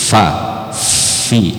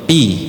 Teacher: Pertemuan gigi atas dengan bibir bawah dan dihembus. Fa, fi. Nah, ada angin keluar. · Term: huruf fi